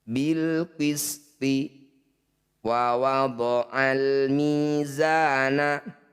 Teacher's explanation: Alif diikuti lam sukun disebut bacaan izhar qamariyah bunyi lam sukunnya baca jelas